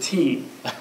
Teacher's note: American teas, all American teas are aspirated. There's a lot of air comes out when you do tea.